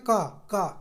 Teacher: जैसे हम बोलेंगे ना का तो अंदर से निकल के आएगा, तो गले से टच करके निकलेगा, ये कंठ से निकलेगा, है ना का। तो ये हमारा कैसा हो गया, कंठ वर्ण है।